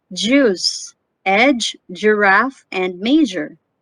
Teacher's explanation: The consonant J is a voiced alveopalatal affricate consonant.